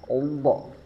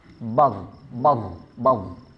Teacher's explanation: Dari segi nafas dia bersifat jahr jelas. Jadi d jangan ada nafas yang keluar.